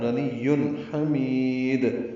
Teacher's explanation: تنوین کے بعد ہا آنے کی وجہ سے اظہار ہے · ہا وسط سے ادا کریں گے، میم کو لمبا کریں گے، دال ساکن پہ قلقلہ ہوگا وقفاً